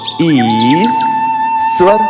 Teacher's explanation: इसे ईश्वर लिखा होने के बाद भी हम जब उच्चारण करते हैं तब ईश्वर कहते हैं। मतलब तालव्य सकार, जिसे बोलचाल की भाषा में शक्कर का स कहते हैं, वह 2 बार पढ़ा जाता है, तब उच्चारण शुद्ध होता है